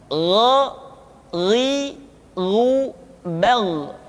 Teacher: Diucapkan seperti kita mengucapkan huruf kha, yaitu diucapkan dari pangkal tenggorokan kita. Yang membedakannya adalah kha mengalir nafas dan gha tidak mengalir nafas. Dan keduanya memiliki persamaan, yaitu memiliki sifat al-isti'la.